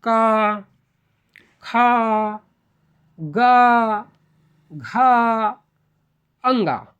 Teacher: कंठ से बोले जाने वाला जो व्यंजन है ना उसको हम क्या बोलते हैं कंठव्य व्यंजन बोला जाता है